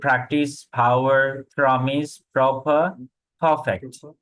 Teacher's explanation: বাতাসটা একটু জোরে এসে লাগে আমাদের হাতে, বুঝতে হবে যে ইউর প্রনাউন্সিয়েশন ইজ কারেক্ট।